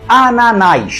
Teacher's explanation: E pelo fato de ela ser oxítona terminada em a, faz com que ela receba o acento gráfico. Ananás tem 3 sílabas e a mais forte é a última.